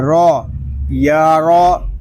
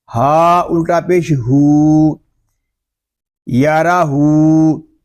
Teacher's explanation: را کے اوپر زبر ہے، را کو ہم پر پڑھیں گے. ہا الٹا پیش ہو، یارا ہو.